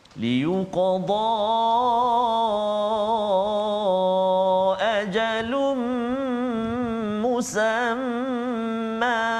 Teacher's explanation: kesemuanya ini adalah kita baca dengan mat iwad dengan kadar dua harakat ketika waqaf